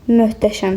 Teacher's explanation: Tələffüz zamanı t-nın yerinə d deyirik.